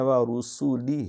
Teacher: سین کے اوپر سیٹی ہے